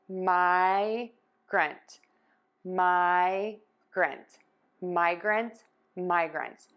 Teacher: Air moves out of the nose, and then when you pull your tongue down, the air puffs out of your mouth for that T. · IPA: /maɪgrənt,/